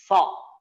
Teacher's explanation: Kemudian ayat ketiga, fokus di so ya, tidak boleh sayas atau sayos nggak boleh. So tidak boleh maju bibirnya ya. Lidahnya ditaruh di ya gigi ya bawah gusinya. Ucapkan, ditebalkan suaranya.